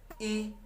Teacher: ई यानी जीभ के अगले के भाग से इसका उच्चारण होता है।